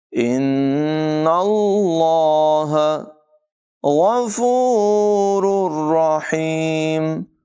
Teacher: نون مشدد میں غنہ ہوگا